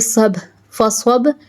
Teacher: Swad always pronounced with thicker voice, its mustaliya letter.